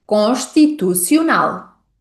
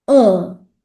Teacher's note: Bom, começamos com mais uma vogal nasal. A vogal nasal on.